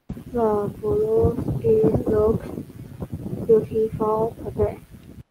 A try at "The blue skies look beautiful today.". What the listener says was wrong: Did you say ski or sky? The blue sky.